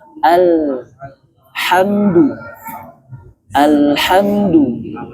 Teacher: lam bukan huruf qalqalah. Hilangkan bunyi la. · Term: Tawasud atau pertengahan